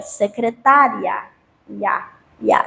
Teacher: O i é uma semivogal, o a é uma vogal, é um ditongo crescente e também é um ditongo oral